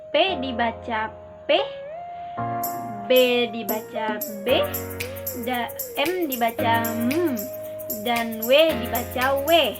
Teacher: Konsonan bilabial yaitu konsonan yang terbentuk oleh pertemuan antara dua belah bibir baik sebagai artikulator maupun titik artikulasi. Fonem konsonan yang termasuk dalam kategori ini adalah P, B, M, dan W.